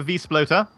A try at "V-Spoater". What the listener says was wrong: There's no L. There's no L.